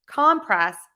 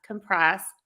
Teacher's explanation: we're stressing syllable number one for compress and syllable number two for the verb compress